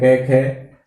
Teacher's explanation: क और ख का उच्चारण करते समय कंपन कम होता है, पहले दूसरे का उच्चारण करते समय गूंज कम होती है, इसलिए ये अघोष वर्णों की कोटि में रखे जाते हैं।